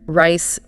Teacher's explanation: The R in rice is usually soft. The tongue curls back a bit but doesn't tap anything. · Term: English R